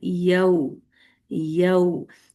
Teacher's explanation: एक तो या की फतहा भी बोलेंगे फिर व भी बोलेंगे।